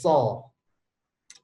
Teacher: So. Tapi kalau so, sa dinaikkan dulu pangkal lidahnya. Jadi tebal dia.